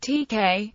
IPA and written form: ˈtɛk (TeX)